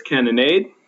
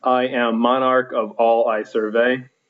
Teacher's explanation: anapestic is unstressed unstressed stressed